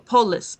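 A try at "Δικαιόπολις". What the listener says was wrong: Polis. Yeah, that's a lambda L.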